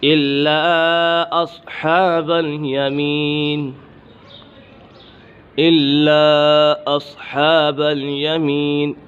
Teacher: الا اصحاب الیمین، الا اصحاب الیمین، یہاں پر مد منفصل ہے، حرف مدہ کے بعد حمزہ دوسری کلمے میں ہے تو اسی وجہ سے مد منفصل ہوگا